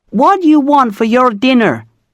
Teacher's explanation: rolling the R sounds in your and dinner